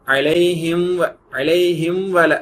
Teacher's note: For example பாருங்க, மீம் பிறகு வாவ் வருதுல, அலைஹிம் அலைஹிம் வல அப்படின்னு பேரு. அலைஹிம் வல அலைஹிம் அப்படின்னு க்ளோஸ் பண்ணிட்டு திரும்ப வாவுக்கு ஃப்ரெஷ்ஷா ரவுண்ட் பண்ணணும் உதட்ட. அது ஸ்பீடா படிக்கணுங்க பேர்ல க்ளோஸ் பண்ணாம அரைங்குறையுமா சொல்லிடாதீங்க.